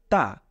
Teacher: জিহ্বার আগাটাকে আপনি আপনার মাড়ির দাঁতের উপরের সাথে লাগিয়ে দিন, উচ্চারণ করুন তা।